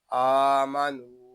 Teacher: یہاں ہم حمزہ کو ایک الف تک کھینچ کر پڑھیں گے کیونکہ یہاں حمزہ کے اوپر کھڑا زبر ہے ، نون کو بھی ایک الف تک کھینچ کر پڑھیں گے · نون کو بھی ایک الف تک کھینچ کر پڑھیں گے کیونکہ یہاں واو مدہ ہو رہا ہے